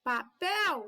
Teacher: Papel, então o pel é forte, então o pel é tônico, então é uma palavra oxítona, porque a última sílaba é forte. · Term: sílaba tônica